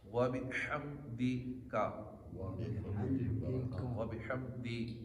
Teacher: دال زیر دی ہوتا ہے, دال زیر دے نہیں ہوتا